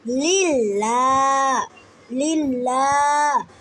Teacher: এখানে লামের ওপর খাড়া জবর এক আলিফ পরিমাণ টান